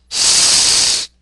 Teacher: The S is an alveolar fricative consonant. Make this sound without vibration of the vocal folds.